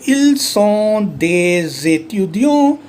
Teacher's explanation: consonant followed by a vowel, the sound is Z